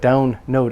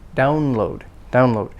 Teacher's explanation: the first part because it's a compound download down load so say the l clearly don't blend the l with the n